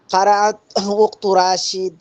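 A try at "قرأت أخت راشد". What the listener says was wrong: রাশিদ না না না না না না, এই ধরনের পড়া হবে না। শেষ অক্ষরে সাকিন, শেষ অক্ষরে এইভাবে ঠকান কেন? শেষ অক্ষর স্পষ্ট হয় না কেন? কারাআত।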